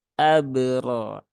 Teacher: Nah, jadi qalqalahnya ditunaikan sesuai dengan porsinya. Jangan jangan sampai ada tambahan hamzah di belakangnya.